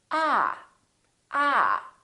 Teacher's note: this vowel is usually longer than most people who are non-native speakers tend to make it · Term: AA sound